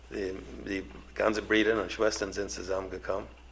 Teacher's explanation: With the R being pronounced as the English R, and the rounded U being pronounced as the unrounded E, Brüder becomes more like breeder